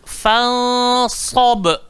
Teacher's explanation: Jangan gigit lidah. Hujung lidah, langgar belakang gigi bawah, kemudian tebal. Fansab. Kalau tak tebal jadi fansab. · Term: sob